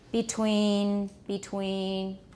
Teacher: this is just a very unstressed mid-tone flat word